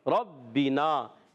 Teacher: با مشدد ذرا رک کر ادا کریں گے